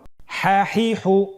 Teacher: আমরা জানি হার উচ্চারণ কোথা থেকে হয়? কণ্ঠনালীর মধ্যখান হতে।